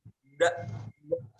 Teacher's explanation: Ini huruf dal, maksudnya punggung ujung lidah dan pangkal dua gigi seri yang atas.